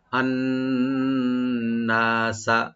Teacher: নুন মুসাদ্দাদ একালিপ পরিমাণ গুণা, আবার একালিপ পরিমাণ টানও করতে হবে, এখানে টেনে পড়তে হবে।